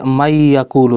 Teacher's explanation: Ketika kita baca mayyakulu, seakan-akan hanya ada huruf ya yang bertasydid